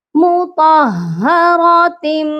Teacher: منہ کو مکمل طور پر بند کریں گے، اپنے لپس کو بند کریں گے اور پھر میم کی آواز آئے گی، نون کی آواز نہیں آئے گی، تنوین کی آواز نہیں آئے گی کیونکہ آگے بِأَيْدِی کا با ہے.